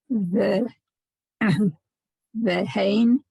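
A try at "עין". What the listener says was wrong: No, there's no hay in there.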